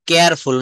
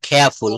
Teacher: তারপর বলবো কিবোর্ড, কুইন, ক্লিন, কিক, কোয়েশ্চেন, কারেক্ট, ক্রিটিক্যাল, কেয়ারফুল না এটা খেয়াফুল, হ্যাঁ ব্রিটিশ অ্যাকসেন্টে রটা সাইলেন্ট থাকবে, খেয়াফুল, ক্লোজ, খল, খুল, ক্যাশ, কস্ট।